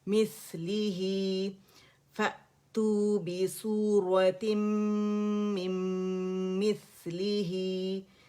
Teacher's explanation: 2 count کی stretching ہے ہائی ضمیری کی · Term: مد صلہ صغرا